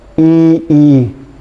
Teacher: कठोर तालु से ई और ई का उच्चारण किया जाता है।